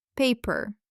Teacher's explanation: In English, the P sound is pronounced with a strong breath, with aspiration. It's like a little explosion of air.